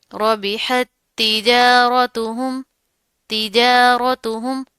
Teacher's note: را موٹا منہ بھر کر پڑھیں گے